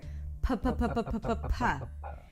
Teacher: We're going to start with a P sound where you bring the lips together and release air. P-p-p.